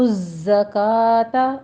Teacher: وَآتُوا الزَّکَاةَ آ اور کا میں فتح قائمہ ہے، 2 کاؤنٹ کرنا ہے. تو زکا میں زائی کے اوپر تشدید بھی ادا کرنی ہے، اس میں سیٹی کی آواز لے کر آنی ہے